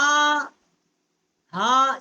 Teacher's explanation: یہ بڑی ہا ہے، اقصائے حلق جو حلق کا حصہ ہے سینے والا وہاں سے اس کا مخرج ہے